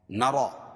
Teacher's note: اور وہ 4 حرف یا، واو، میم اور نون ہے تو یہاں تنوین کے بعد ادغام مع الغنہ کے 4 حرفوں میں سے واو آ جائے گی. نرا، کھڑا زبر قائم مقام الف مدہ کے اس کو ایک الف کے برابر کھینچ کے پڑھیں گے اور را پور ہوگی.